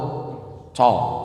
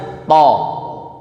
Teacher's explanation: Contohnya huruf ta tadi. Nah, huruf ta itu nggak ada hamesnya Ibu, nafasnya nggak boleh ngalir kencang.